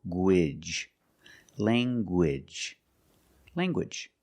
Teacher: You have the nasal sound, lang, and the hard g.